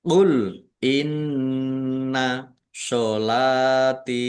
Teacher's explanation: Nun tasdid dibaca ghunah atau mendengung. Ditahan biar tampak mendengung.